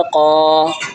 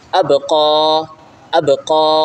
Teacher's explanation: قاف کھڑا زبر قا، قاف کو ایک الف کی مقدار کھینچیں کیونکہ اس کے اوپر کھڑا ہے. کھڑا کو ایک الف کی مقدار کھینچ کے پڑھا جاتا ہے.